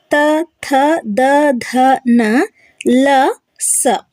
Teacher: ಇವು ಹಲ್ಲುಗಳ ಸಹಾಯದಿಂದ ಹುಟ್ಟುತ್ತವೆ ಹಾಗಾಗಿ ಇವುಗಳನ್ನ ದಂತ್ಯ ವರ್ಣಗಳು ಅಂತ ಕರೀತಾರೆ